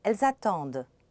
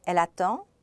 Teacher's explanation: Elle attend, elles attendent. The D is heard in the plural and not in the singular